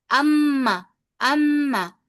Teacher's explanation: आपके होठ में भी हल्की सी वाइब्रेशन फील होगी।